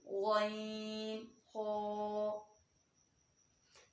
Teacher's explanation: हलक के ऊपर वाले हिस्से से अदा होंगे और पुर अदा होंगे